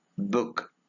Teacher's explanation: It is a mid-high back lax vowel.